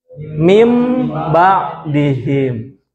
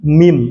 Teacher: cara membacanya menggantikan huruf nun mati ataupun tanwin seolah-olah membaca huruf mim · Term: iqlab